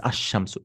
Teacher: You can remember, like, the sun burns away the lam. Now, the sun burns away the lam. So, it becomes ash-shamsu.